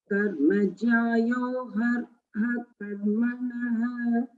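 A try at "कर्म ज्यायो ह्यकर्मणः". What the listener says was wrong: Okay, hyakarmanaha, that's fine.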